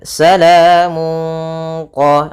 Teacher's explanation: bacaan Ikhfa yaitu suaranya tanwinnya disamarkan ke huruf q qf itu termasuk huruf yang Istia dan agak ditebalkan Salamun qo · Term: isti'la